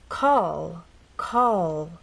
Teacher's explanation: our tongue pressed against the bump in words like call call as you finish the word the tongue does not drop down it stays pressed against that bump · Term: final position